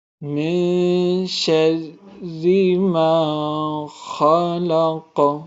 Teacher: من کی جو آواز ہے اس کو ہم ناک میں پڑھیں گے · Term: اخفا